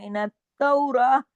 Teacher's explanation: हाँ की आवाज गले में आनी चाहिए